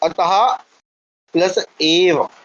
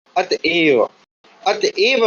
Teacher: जो विसर्ग है उसका लोप कर दीजिए विसर्ग का लोप हो जाए